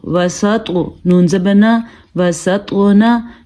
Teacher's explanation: ایک تو طوا کو پر پڑھنا ہے کیونکہ طوا حروف مستعلیہ میں سے ہے